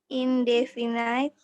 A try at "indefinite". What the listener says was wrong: Bukan night, indefinite.